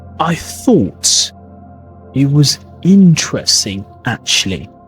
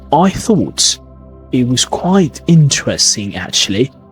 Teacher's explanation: British English has the gentle ups and downs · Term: rhythm